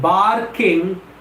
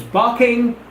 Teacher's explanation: the or in the spelling of bark is quiescent is silent